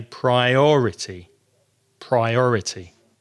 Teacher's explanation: a priority and that could be difficult because of the syllables it has four syllables priority and it's the second syllable that's strong